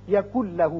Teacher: نون ساکن کے بعد جب لام آ جائے تو وہاں ادغام تو ہوتا ہے لیکن غنہ نہیں ہوتا. اب نون نہیں پڑھا جائے گا، کاف کی آواز لام سے سیدھی ملے گی. یکن لہو پڑھیں گے.